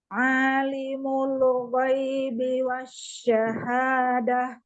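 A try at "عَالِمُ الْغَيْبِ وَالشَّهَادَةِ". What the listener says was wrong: Huruf ainnya coba makhrajnya. Alimul ghaibi wasyahadah. Kemudian jangan tebal, tipis ya. Alimul ghaibi. Bukan li kasroh. Alimul.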